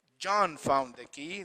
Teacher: this is extra extra stress john for focus john not somebody else found the key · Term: sentence focus